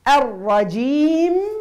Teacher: والميم لابد تعطيها الزمن متاحة باش نسمعوها